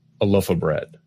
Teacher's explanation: We might just use the reduced vowel, our old friend schwa, instead of clearly saying the word of.